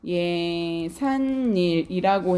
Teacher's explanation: 발음해보면 예산일이라고 해서 여러분 니은 소리가 한 번, 두 번 덧나고 있어요